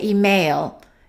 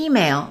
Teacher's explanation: The first syllable is stressed. Some people make a mistake and they say email.